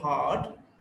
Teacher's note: Next vowel is R, is a back, unrounded, long vowel. Hard, h, d, hard.